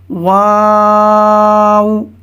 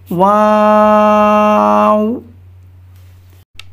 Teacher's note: دونوں ہونٹوں کی گولائی سے ادا ہوتا ہے، واو۔ پہلے آپ نے منہ کو کھلا چھوڑنا ہے اور آخر میں گول کرنا ہے، واو۔